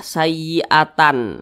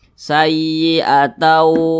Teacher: Didengungkan itu suaranya itu kita tahan atau kita panjangkan kira-kira 2 ketukan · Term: idgham bi gunnah